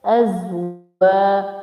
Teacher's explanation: waw with alif, so make it long for 1 second